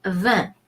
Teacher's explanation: De, we talked about this. And vin, IN in French is a nasal E, so it's going to be vin.